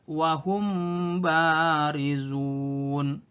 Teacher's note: hukum bacaan mim mati apabila bertemu dengan huruf ba dibaca samar-samar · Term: Ikhfa Syafawi